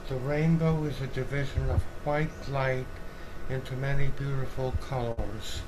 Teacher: you can hear that he's very breathy and weak